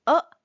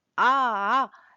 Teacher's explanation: अ में एक मात्रा का समय लगा आ इसमें दो मात्राओं का समय लगा